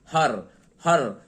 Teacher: और हर एक तरीके से जब हम उच्चारण करते हैं तो ये र का उच्चारण जो होता है ना, एक तरीके से हल वर्ड का ही उच्चारण होता है, पूरा र नहीं बोलते हैं। हर हर इसमें र पर जाके रुक जाते हैं और र की आधी उच्चारण ही हो पाती है